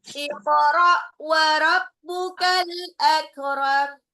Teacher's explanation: Iqra, qafnya pantul, qalqalah.